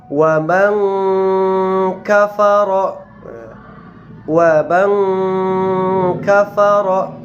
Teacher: cara membacanya adalah menyamarkan daripada bunyi nun sukun karena dia berhadapan dengan huruf kaf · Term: ikhfa